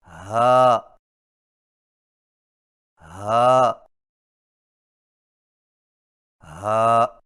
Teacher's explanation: ہا کی آواز حلق سے بغیر رگڑ کھائے نکلتی ہے